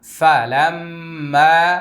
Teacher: প্রথমে ওয়াজিব গুন্না, তারপরে এক আলিফ টান।